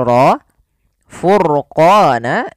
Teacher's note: pada lafal ro furqana ini rnya dibaca dengan tebal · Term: ro tafkim